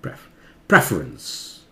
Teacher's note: प्रेफ जोर हो जाता है यहां, फर जोर से था, प्रेफ, प्रेफरेंस।